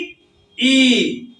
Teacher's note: ये तालू से होता है जीव हमारे जाकर तालू को टच करते है और वहां से इसका उच्चारण होता है तो छोटी ई और